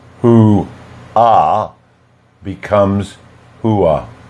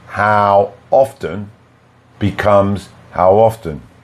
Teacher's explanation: the speaker adds a consonant in the first word at the end, and the sound is w or y. But it's not a full sound. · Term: vowel to vowel linking